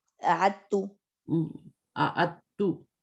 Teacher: اس کو تھوڑا پڑھنا مشکل ہوتا ہے کہ دال اور تا ایک ہی مخرج ہوتا ہے نا, تو ہم اس کو تھوڑا سا پڑھنا مشکل ہو جاتا ہے, لکھنا مشکل جب تشدید دیتے ہیں نا, تو اعدتو ہو جائے گا.